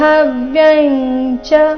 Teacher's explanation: ಅನುಸ್ವಾರದ ಉಚ್ಚಾರಣೆ ಇಲ್ಲಿ ಚ ವರ್ಗದ ಅನುನಾಸಿಕದ ರೀತಿ